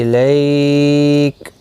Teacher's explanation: لیالین ہے، تھوڑا نرمی کے ساتھ آدھے الف کی مقدار کے برابر کھینچ کر پڑھا جائے گا